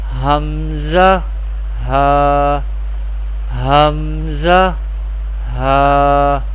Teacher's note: Hamza ha pronounced from the bottom part of the throat.